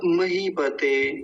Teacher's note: महीपते में देखेंगे मकार, बड़ी की मात्रा है मही में। तो थोड़ा सा लंबा खींचेंगे।